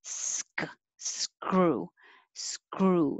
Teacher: i can make my s and my k at the same time